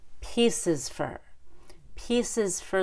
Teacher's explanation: pieces starts with a long e but then has the little short U at the end